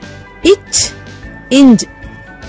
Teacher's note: ஆகிய 2 மெய்களும் நாவின் இடைப்பகுதி, நடு அன்னத்தின் இடைப்பகுதியை பொருந்துவதால் பிறக்கின்றன